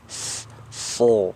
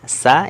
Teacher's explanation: Yang membedakan ya, yaitu sifatnya ataupun cara mengeluarkan hurufnya. Huruf shad dia hurufnya tebal, isti'la, so. Sedangkan sin ya, sa ini dia tipis, sa, so. Padahal dia tempat keluarnya kan sama, hanya yang berbeda itu di cara mengeluarkannya.